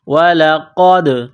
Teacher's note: دال ساکن ہے، قلقلہ کریں گے